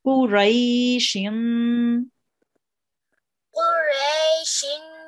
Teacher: it's two kasras. We make a nasal sound.